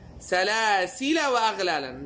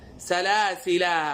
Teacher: در حاله وصل الف حذف میشه و در حاله وقف الف باقی میمانه.